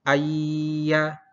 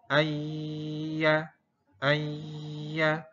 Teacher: Ini adalah hukumnya idgham bi gunnah, nun sukun bertemu ya. Sehingga idgham bi gunnah, jadi masuk dengan didengungkan.